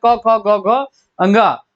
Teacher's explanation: एक कंठ होता है जो का वर्ग होता है, क, ख, ग, घ, अंगा, तो ये होते हैं कंठ।